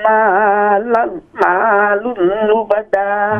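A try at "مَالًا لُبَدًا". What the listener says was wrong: مال لبدا دو زبر ہیں لبدا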